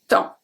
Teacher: we don't pronounce the p we don't pronounce the s